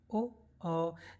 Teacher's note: इसमें हमारा कंठ और ओट दोनों से ही ध्वनि निकल रही है दोनों ही इसमें क्रिया कर रहे हैं कंठ भी और ओस्ट